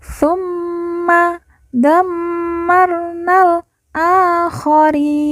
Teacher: na kita baca langsung masuk huruf lam tanpa membaca Alif karena Alif dianggap tidak ada karena di depannya terdapat lam sukun · Karena di depannya terdapat lam sukun, maka membacanya na langsung loncat ke huruf lam